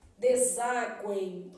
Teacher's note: O meu M tem som de I, formando um tritongo